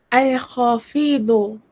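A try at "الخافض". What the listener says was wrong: Al-Khafidu. You have pronounced the long vowel at the wrong place. Okay, make sure the long vowel. Where is the long vowel? Al-Khafidu, correct. But not Al-Khafidu, yeah? Al-Khafidu. So this is with the al lam sound, correct.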